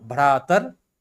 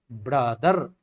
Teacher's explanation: ब्रदर बन जाता है, र तो रह ही गया है, तो भ्रातर ब्रदर, भ जो है ब में बदल गया है